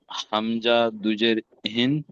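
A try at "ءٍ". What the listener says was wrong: হামজা দুজের হিন নয়, হামজা দুজের ইন।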